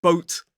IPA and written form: bəʊt (boat)